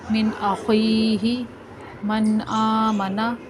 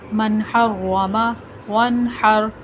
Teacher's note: نون ساکن اور تنوین کے بعد حروف حلقی میں سے کوئی حرف آ جائے تو نون ساکن اور تنوین کو ظاہر کر کے بغیر غنہ کے پڑھیں گے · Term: اظہار